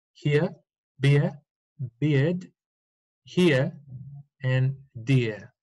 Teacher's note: british english should be erasing the r